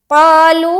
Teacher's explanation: قا میں الف مدہ، لو میں مد، 3 سے 4 الف کھینچیں گے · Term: مد منفصل